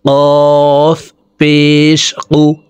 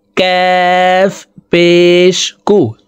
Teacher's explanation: কাফ হরফকে জিহ্বার গোড়া থেকে একটু আগে বাড়াইয়া তার বরাবর উপরের তালুর সঙ্গে লাগাইয়া উচ্চারণ করে পড়ব